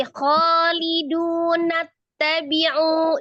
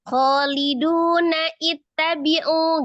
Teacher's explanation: Jadi tidak dibaca khaliduna ittabi'u gitu. Jadi maka hamzahnya dihilangkan ketika dia wasal. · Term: hamzah wasol